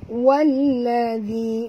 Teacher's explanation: Walladhi, wal alif lam syamsiah, masukkan, ya, huruf waw baris atas ni terus ke dalam lam disertai dengan jod, kerana di atas lam ada tasydid, ada dua lam